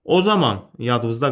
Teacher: Həmin bu birinci o saiti tələffüzdə çevriləcək A-ya.